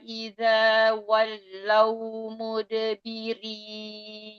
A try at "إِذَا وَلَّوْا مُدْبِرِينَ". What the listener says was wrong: إذا ولوا. Lagi, lamnya tipiskan Ustaz, enggak? Walau. Walau.